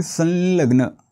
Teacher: अनुस्वराच्या समोर ल आलाय म्हणून अनुनासिक ल टाकायचंय